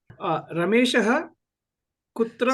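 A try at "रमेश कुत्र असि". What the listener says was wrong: This is Sambodhana. So there is no Visarga here. Please remove that Visarga. Ramesha kutra asi. Hey Ramesha, Bho Ramesha, Re Ramesha. You can say whichever way you want. You don't need that also. You can just say Ramesha also.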